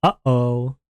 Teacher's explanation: An example of a glottal stop in English is the sound represented by the hyphen in uh-oh.